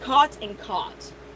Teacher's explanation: These two words are pronounced the same on the West Coast and in the Midwest, and elsewhere are pronounced distinctly.